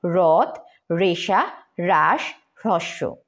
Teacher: হয়ের সাথে যদি রফলা যুক্ত হয় তাহলে কিন্তু সেটা সরাসরি র উচ্চারিত হবে